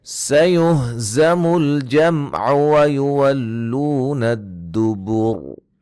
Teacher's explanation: اور را کو موٹا ادا کریں گے وقفاً وصلاً